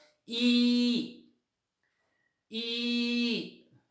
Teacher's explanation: हा उच्चार म्हणजे करत असताना आपले ओठ गोलाकार होत नाहीत. त्यामुळे इट इज अनराउंडेड व्हावल.